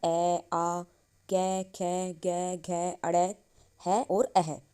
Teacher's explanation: ये हम क्या सारे उच्चारण कंठ से करते हैं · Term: कंठ्यः वर्णः